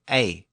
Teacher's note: it was two vowel sounds squeezed together it was pronounced something like a and it was often spelled